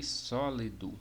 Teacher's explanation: Na palavra sólido, a sílaba só é de maior intensidade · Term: sílaba de maior intensidade